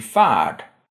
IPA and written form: fæːɖ (färd)